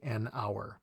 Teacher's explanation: talking about the sound not necessarily the letter because you know some letters are silent at the beginnings of words like in the word hour it starts with an h which is a consonant but the sound is a vowel sound